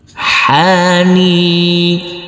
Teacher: huruf nun ini kita baca panjang dengan panjang 2 harokat karena huruf nun yang berkasroh i ini bertemu dengan huruf ya sukun.